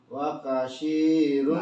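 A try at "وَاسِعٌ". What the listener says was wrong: Masih tercampur shin. Wakasi. Pakai s aja.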